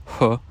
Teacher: and so if you say huh with rounded lips H um a certain amount of friction happens at your lips rather than just at the back of the mouth